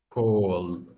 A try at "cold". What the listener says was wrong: But number 2 ends with ah. Cold. Cold. You have to end with an ah in number 2. Old. Cold.